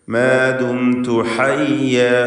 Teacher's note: ഹ വ്യക്തമാക്കി അതിൻ്റെ മഖ്റജിൽ നിന്ന്, തൊണ്ടയുടെ മധ്യത്തിൽ നിന്ന് തന്നെ ഉച്ചരിക്കുക.